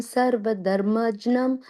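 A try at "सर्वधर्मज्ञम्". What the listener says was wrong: So that second word, you said dharmajyam, j sound came. There's no j sound there. It's just a nya. Dharmagnyam. Dharmagnyam. Sorry, நீங்க தமிழா இல்ல தமிழ் ஞான பழம்னு வரும் இல்லையா அந்த ஞா அதான் தர்மஜ்ஞம் கரெக்ட்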